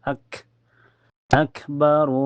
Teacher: Tertahan dulu lalu keluar napas. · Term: kaf sukun